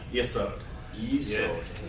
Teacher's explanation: Yeah, emphasis on the second syllable, right?